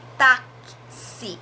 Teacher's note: esse X, ele pronuncia 2 sons, o K e o S